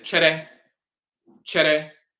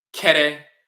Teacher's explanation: the Fanti would say chere, chere, but the Asante would pronounce it kere, more harshly with a K. So it'll go from cha to ka.